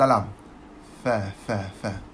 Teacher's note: Fa ni gigi atas untuk bibir bawah